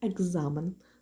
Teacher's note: глуха к перед дзвінкою з замінюється на дзвінку ґ